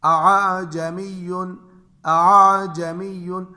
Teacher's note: اس لفظ کے پہلا حمزہ جو ہے اس کو صاف اور واضح اور دوسرے حمزے کو نرمی سے پڑھنا واجب ہے